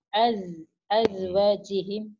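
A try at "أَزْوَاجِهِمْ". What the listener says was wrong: azwanya panjang illa illa illa ala azwajihim au ma malakat aymanuhum sampai situ dulu kalau napasnya cukup ya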